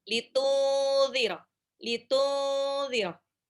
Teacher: Nunnya hampir mau lompat ke marasnya zal, jadi dibaca samar, ditahan 2 sampai 3 harokat.